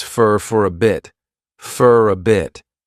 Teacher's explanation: Many native speakers will combine all three of these together and they'll pronounce for as more of an unstressed fur, fur a bit, and again, that flat T on bit.